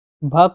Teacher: अब भ को बोलेंगे तो इसमें आपस में लिप्स आपस में जुड़ रहे हैं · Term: ओष्ठ ध्वनि